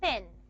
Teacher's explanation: So this nasal sound is going to affect the pronunciation of the vowel E. The vowel E is going to become nasalized.